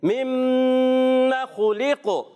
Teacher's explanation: نون مشدد یا میم مشدد ایک الف کا غنہ ادا کریں گے